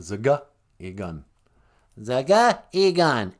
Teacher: We kind of do a little glottal stop, I think they call it.